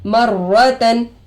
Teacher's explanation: रा पर तशदीद आकर है रोए मुशद्ददा होगा। रोए मुशद्ददा पर जबर आकर है रा को पुर करके पढ़ेंगे।